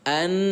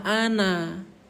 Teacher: Maka cara membaca nun yang bertasdid ini ialah dengan cara ditahan selama 2. 2 ini bukan 2 tahun bun, tapi 2 ketukan. Maka wajib terbaca anna, jangan dibaca ana. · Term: gunnah